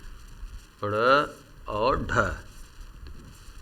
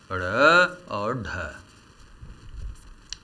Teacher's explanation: उच्छिप्त व्यंजन इन्हें क्यों कहा जाता है? क्योंकि इनके उच्चारण में जिह्वा मूर्धा के पास जाती है और झटके से नीचे गिरती है, इसलिए इन्हें उच्छिप्त व्यंजन कहा जाता है।